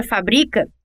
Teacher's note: Para dar outro exemplo, na palavra fábrica, que é proparoxítona, a sílaba tônica fá é a terceira, embora seja essa sílaba a primeira a ser falada e escrita. Já na palavra fabrica, que é paroxítona, a sílaba tônica é bri, e é a segunda sílaba da palavra